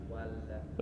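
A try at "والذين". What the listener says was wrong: La. Lidahnya yang paling ujung yang disentuhkan ke atas, jangan ada lidah yang lain. La. Kalau disentuhin lidahnya agak banyak, maka bunyinya menjadi la, jadi tebal. Paling atas. Nah, ujung aja. La walladzi.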